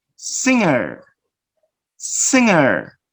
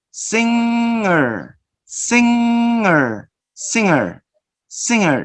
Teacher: Notice here the back part of your tongue to the back part of your mouth, the oral cavity, and you block the air so the air goes through the nose.